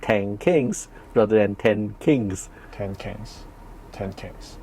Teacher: place assimilation of nasals. These are nasals. And they assimilate to, let's say, the following consonant. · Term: nasal assimilation